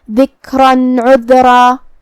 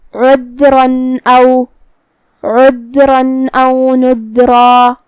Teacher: اور اگر یہ کلمہ کو اگلی آیت کے ساتھ ملا کے پڑھے تو جو کہ حرف العین کلمت عذرا میں حروف الاظہار میں سے ہے، اور اظہار کا معنی ہے ظاہر کرنا، اور تنوین کی اصلیت نون ساکن ہے، لہذا ہم یہاں تنوین ظاہر کریں گے اور اسے نون ساکن پڑھیں گے اور بغیر غنہ سے یہ حکم کو ادا کریں گے